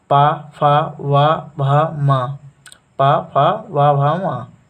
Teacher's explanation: ओष्ठ्य ध्वनियाँ वो ध्वनियाँ होती हैं जो दोनों ओठों के मिलने पर उच्चारित या उच्चारण में आती हैं